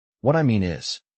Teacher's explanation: stress mean, and drop the pitch on is